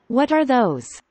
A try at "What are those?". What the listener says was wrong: 소리가 z 소리 아니죠, those.